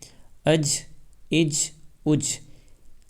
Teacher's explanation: جیم قلقلہ کے 5 اکثروں میں سے ہے، اس لیے اس میں قلقلہ ہوگا